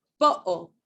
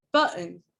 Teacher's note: there are certain dialects of English that use this glottal to substitute T